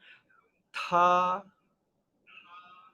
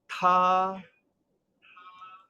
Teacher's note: T itu mesti ada bunyi angin